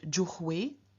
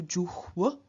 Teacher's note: Juhu turns into juhw, so the u changes into its semi-vowel counterpart w